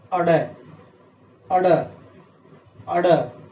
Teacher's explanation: इनमें हमारी जीभ की नोक एक बार ऊपर टच करती है और फिर झटके के साथ नीचे आती है · हमारी जीभ का जो नुकीला हिस्सा है तालू से लगता है और एकदम से पटक देते हैं हम, तो उसको उसकी ध्वनि विकसित हो जाती है, ध्वनि बाहर निकलती है। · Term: उत्क्षिप्त व्यंजन